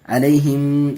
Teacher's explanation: علیہم دیکھیے میم ساکن کے بعد میم آیا ہے، یہاں ادغام شفوی کا قاعدہ ہے. میم ساکن کے بعد میم آیا، اس لیے میم کو میم سے ملا کر کے گنہ کے ساتھ پڑھیں گے